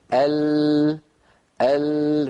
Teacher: فماذا يفعل الصوت ينحرف بعضه عن يمين اللسان وينحرف بعضه ان يسار اللسان ثم من الطرفين يتابع طريقه خارجا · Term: انحراف اللام